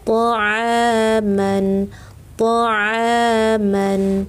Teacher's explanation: hati-hati huruf ain tengah tenggorokan ya